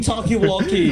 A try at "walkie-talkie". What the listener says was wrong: It's walkie-talkie, not talkie-walkie!